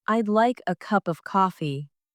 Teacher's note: The stress falls on like cup and coffee.